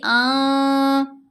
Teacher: نون کی آواز کو ناک میں چھپائیں گے، آواز بنے گی آں، ساتھ غنہ بھی ہے، یعنی آواز کو سٹریچ بھی کریں گے، 2 حرکات کی مقدار لمبا بھی کریں گے ناک میں پڑھتے ہوئے۔